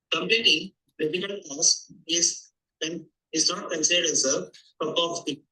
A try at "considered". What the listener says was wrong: Considered as a is not considered as. You did not put stress on the whole word. It came out just 70-80% from your mouth. The rest was all mumbled out. I mean, you can imagine it is considered, but you didn't speak out the whole word considered.